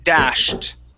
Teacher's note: With a T, because an SH is an unvoiced sound